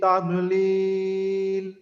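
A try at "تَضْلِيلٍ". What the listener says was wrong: এটা দালের মতো উচ্চারণটা না হয়, হ্যাঁ জিহ্বার আগা যেন ব্যবহার না হয়, এই বিষয়টা আমরা একটু অবশ্যই খুব ভালোভাবে খেয়াল রাখবো, কারণ দুইটা দুই হরফ, দালের মতো না হয়, হ্যাঁ, দাদের উচ্চারণ দেবো।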